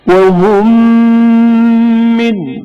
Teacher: پہلی قسم ایک جیسے دو حروف کا آپس میں ادغام، جسے ادغام متماثلین بھی کہتے ہیں. جیسے میم ساکن کا میم حرکت دار میں ادغام ہونا